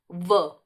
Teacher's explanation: य, फिर र मूर्धा से, ल, ल आपका जो निकल रहा है दंत, ल, दंत ये दांत का पीछे का है, ल, फिर य, र, ल, व में आप बस एक है, ये दंतोष्ठ है, क्योंकि देखिए व तो आपका ये ओंठ भी आपका उच्चारण स्थान में देखिए ओंठ का भी प्रयोग हो रहा है और दांत का भी, व। तो ये हो गया दंतोष्ठ।